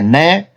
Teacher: न दंत उच्चारण स्थान है और नासिका से भी बोला जाता है